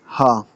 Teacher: ہا کی آواز بھی آپ کے گلے سے نکلتی ہے اور گلے کے نچلے حصے سے ہا کی آواز نکلتی ہے۔